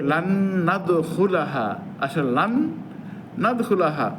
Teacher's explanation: ওই নুন সাকিনটা আরেক নুনের পরে নুনে ঢুকে গেছে।